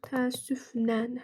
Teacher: Ə-in biri düşəcək, biri uzun tələffüz olunacaq.